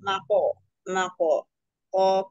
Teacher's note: hukumnya Qalqalah Sugra dipantulkan kecil